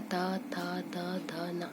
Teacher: जब हम ता, था, दा, धा, ना का उच्चारण करते हैं तो हमारी जो जीभ है वो हमारे दांतों को छूते हुए देखिए उच्चारण होता है।